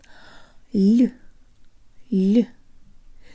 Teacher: Another way to think of it is that it's an L with a slight Y sound built in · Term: soft L